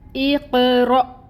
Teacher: جب رو کے اوپر فتحہ ہو تو اس کو پر پڑھا جاتا ہے، اور پھر آگے حمزہ نظر آ رہی ہے جس کے اوپر سکون ہے، تو یہاں پر ہم جھٹکا دیں گے